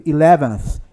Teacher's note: Ó, 11th, olha a língua. Esse aí é o som do TH, é o TH que não é pronunciado, é o unvoiced. Então, ó. Então, eu não vou dizer 11, eu digo 11th, em número ordinal.